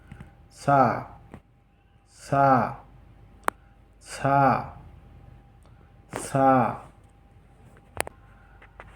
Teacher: দুই দাঁতের সাথে জিহ্বার তালু লাগিয়ে এক আলিফ টেনে উচ্চারিত হয়।